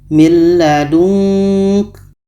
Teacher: Ada menghasilkan bunyi nga untuk nun mati bertemu ka. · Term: ikhfa hakiki